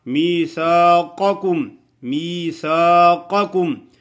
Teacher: میثاقکم 2 قاف آ گئے ہیں، پہلا موٹا ہے اور دوسرا باریک ہے. می یا ساکن یا مدہ ہے، سا الف سا ہے، ادھر الف بھی مدہ ہے.